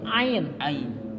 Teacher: Nah ini dari tenggorokan bagian atas nih, paling atas.